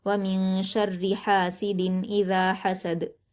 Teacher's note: व मिन शर्रि हासिदिन इज़ा हसद, और ये ख़याल रखना है कि जब आप हासिदिन इज़ा हसद पढ़ते हैं, यानी आप तनवीन को ज़ाहिर करके पढ़ते हैं, तो आपको यहाँ गुन्ना नहीं करना होता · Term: इजहार